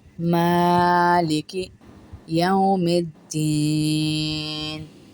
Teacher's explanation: میم کو الف کے برابر کھینچیں گے، ایک الف کے برابر